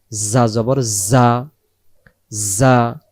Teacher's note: যা অক্ষর সামনের নিচের দাঁতের আগা থেকে শীষ দিয়ে পড়তে হয়